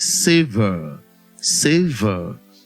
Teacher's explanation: the letter A that is underlined realizes the A diphthong, not the R sound.